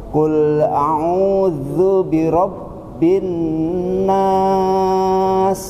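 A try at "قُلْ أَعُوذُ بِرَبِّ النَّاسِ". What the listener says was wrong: Masya Allah, gitu Pak ya. Bagus.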